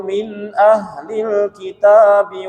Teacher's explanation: Nakafaru min itu izhar halqi tanpa dengung, langsung saja min bukan min tapi min langsung.